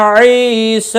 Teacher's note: عی یا مدہ ہے، اس کو بھی ایک الف کے برابر کھینچ کر پڑھیں گے